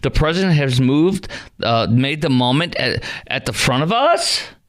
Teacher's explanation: You uptalk like it's a question.